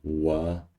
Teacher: It's a co-articulated sound. It's bilabial and it's velar.